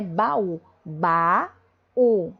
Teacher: A gente tem essa tonicidade e essa separação nítida ao articular nos lábios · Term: hiatos